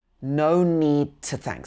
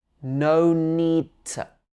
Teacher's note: So here the to changes to t.